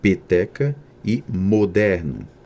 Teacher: em alguns dialetos do Sudeste e do Sul do Brasil São pronunciadas fechadas